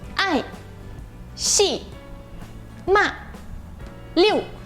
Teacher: Tudo é bem curto, forte e desce rápido, né? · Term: quarto tom